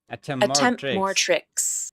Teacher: Native speakers will typically drop the t in attempt, which makes this phrase sound like >> attempt >> attempt more tricks.